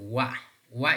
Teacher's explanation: the two lips come close but they're not touching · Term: semivowel